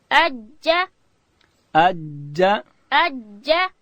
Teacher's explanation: جیم ادا کیږي د ژبې منځ به لوړ تالو ته ورړو